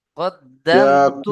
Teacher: মিম সাকিনকে বিনা গুণনায় জাহির করে পড়তে হবে। একে ইজহারে শাফাবি বলা হয়।